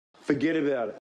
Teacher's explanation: Here, we've got consonant sounds next to vowel sounds, so this tends to be said as one long word. And here, the t sound at the end of forget and about actually sounds like it's somewhere between a D and a T.